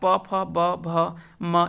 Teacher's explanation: प फ ब भ म ये सभी जो है वो ओष्ठ से उच्चारण होने वाले कह सकते हैं कि वर्ग है। तो प वर्ग का जितना भी होता है वह ओष्ठ से उच्चारण होता है